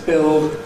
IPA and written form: bɪld (build)